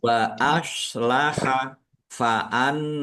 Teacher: nun tasdid bacaan gunnah atau mendengung ditahan biar tampak mendengungnya